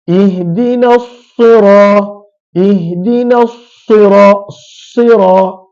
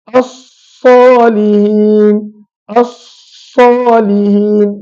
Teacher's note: dia punya sifat sofir tu kita sebut terlalu berlebihan, terlalu melampau. Kita nak jadikan huruf sad tersebut ada sofir, ada ketajaman pada bunyi, ada desiran pada bunyi, tetapi terlalu over. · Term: berlebihan pada sofir